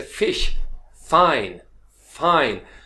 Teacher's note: ये आपके लेबियोडेंटल है जिसमें दांत और होंठ दोनों मिलकर चलते हैं